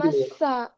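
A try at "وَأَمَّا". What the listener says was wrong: வமஸ்ஸாவா? அப்ப மீம்ல சத்த விட்டுறீங்களே, வமஸ்ஸாண்டா? வ அம்மஸ்ஸா.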